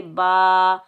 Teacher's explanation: یہ الف مدہ، اس کو ہم ایک الف کی مقدار کھینچ کر ادا کریں گے